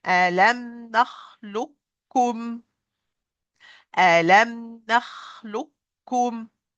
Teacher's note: Here, I have qaf sukoon, kaf with damma, so qaf is fully merged into the kaf, that's why kaf received shaddah